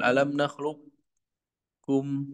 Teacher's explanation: Idgham yang tidak sempurna karena tetap mempertahankan sifat isti'la pada huruf qof. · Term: idgham naqis